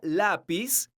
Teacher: La palabra lápiz es una palabra grave porque su sílaba tónica es la sílaba la. Esta palabra termina con la consonante Z.